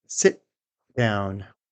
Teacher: No puff of air. We simply hold our tongue up to the gum ridge, and then transition into the next sound. Releasing the t sounds unnatural here. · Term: held t